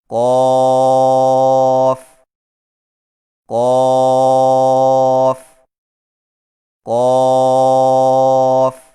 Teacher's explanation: زبان کی جڑ کو کوے کے متصل تالو پر لگا کر موٹی آواز میں پڑھیں